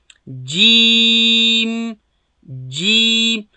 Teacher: کله د ژبې منځ او د هغه مخامخ پورته تالو